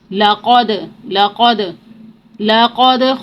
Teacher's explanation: دال کو مخرج میں روکیں گے نہیں، اس کی آواز پلٹ کر واپس آئے گی ، اس کو قلقلہ کہتے ہیں، لَقَدْ، لَقَدْ، لَقَدْ خَلَقْنَا الْخَلَقَ،